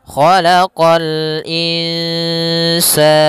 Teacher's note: qa juga huruf isti'la pangkal lidah terangkat